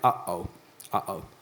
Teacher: There's that little pause. Yeah, so that's a glottal stop.